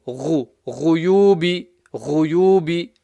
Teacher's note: Ghuyubi, the ghain, top of the throat. Ghuyubi, ghuyubi.